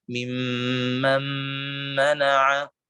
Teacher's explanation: Dengung pada huruf nun lebih kuat daripada huruf mim, sehingga ketika kita membaca wa ketika kita membaca mimman mana'a, maka kita katakan dengung ini berasal dari huruf nun dan bukan dari huruf mim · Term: idgham naqis